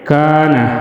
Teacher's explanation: کان مد اصلی 1 الف کے برابر کھینچ کر پڑھیں گے